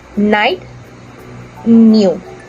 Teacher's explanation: both n and y are voice and for the airf flow for n the air passes through the nose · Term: Naser